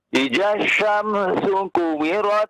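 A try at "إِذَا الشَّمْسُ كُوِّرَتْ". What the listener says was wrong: Tahan ya. Di huruf wawunya itu tasydid juga ya.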